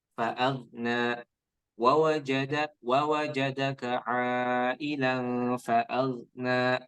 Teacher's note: Kemudian di ayat ke-8 ya Kak, itu tidak dipantulkan gha-nya ya. Fa'aghna wawajadaka ailan fa'aghna, tidak dipantulkan ya karena bukan qalqalah.